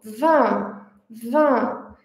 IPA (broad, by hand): ɛ̃